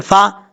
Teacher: اب فا کا مخرج بھی آپ کو بتا دوں، فا جو ہے اوپر والے دانتوں کا کنارہ، سادہ لفظوں میں بتا رہا ہوں آپ کو، اوپر والے دانتوں کا کنارہ نیچے والے ہونٹ کی تری والی جگہ پہ لگے گا